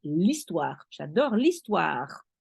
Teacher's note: You link the L to the histoire because the H doesn't count, so you link the L to the E.